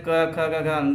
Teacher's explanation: हम इन वर्णों को जब बोलते हैं तो कंठ से मेरा क ख ग घ अंग निकलता है। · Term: कंठ वर्ग